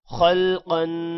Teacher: خا اور قاف کو موٹا پڑھیں گے،